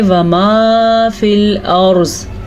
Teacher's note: را کو اس لیے پر پڑھیں گے کیونکہ را ساکن ہے اور اس سے پہلے حرف پہ زبر ہے۔ زواد کو اس لیے پر پڑھیں گے کیونکہ زواد حروف مستعلیہ میں سے ہے۔ حروف مستعلیہ وہ 7 حروف ہیں جو ہر صورت میں پر پڑھے جاتے ہیں۔ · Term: را کو پر